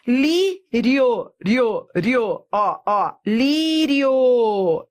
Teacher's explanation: Eu fui da semivogal para a vogal. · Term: Ditongo crescente